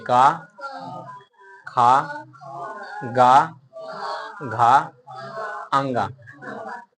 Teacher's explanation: का वर्ग को कंठ से बोला जाए